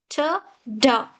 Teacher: When you say t, d, your tip of the tongue touches the behind teeth area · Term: Alveolar